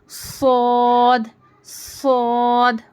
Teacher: صاد کو پڑھتے وقت سیٹی کی آواز آنی چاہیے · सद को पढ़ते वक्त सीती की आवाज आनी चाहिए